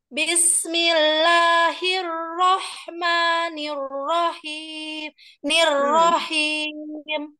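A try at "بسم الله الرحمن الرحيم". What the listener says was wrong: jangan terlalu buru-buru. Dan maksudnya cara kecepatan membacanya terlalu cepat, jadi tidak sama.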